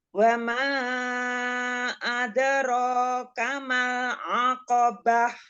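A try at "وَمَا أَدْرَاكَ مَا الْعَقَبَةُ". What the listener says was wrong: Ada ro tafhimkan lagi. Jadi alirkan aja suara sama nafasnya ya.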